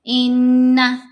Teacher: ناک میں آواز ہوتی ہے۔ غنہ کی جو آواز ہے ناک سے آنی چاہیے، منہ سے نہیں آتی۔